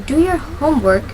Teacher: in do your homework the stress falls in the word homework. In direct speaking, placing stress correctly helps the listeners immediately understand what you are intending to say.